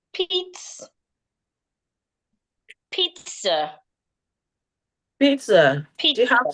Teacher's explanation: The first zed sounds like a T. The second zed sounds like a S.